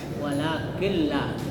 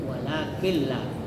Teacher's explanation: Cara membacanya mengidgamkan, ya, mengidgamkan nun ke dalam huruf lam atau ra, tetapi tidak mendengung. Jadi nunnya itu berganti menjadi lam. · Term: idgham bila gunnah